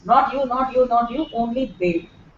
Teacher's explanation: that you like only Dave and nobody else I like yeah here the stress will be on B